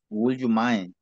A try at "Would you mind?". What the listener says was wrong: Would. La L no suena. Would you mind?